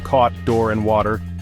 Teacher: O as in thought is long, mid, low, back, and rounded.